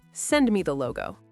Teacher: When you use an imperative like send me, your voice naturally goes down at the end. It sounds like a command. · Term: Falling intonation